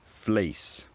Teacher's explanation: The fleece vowel always comes out as a diphthong ranging from E to A.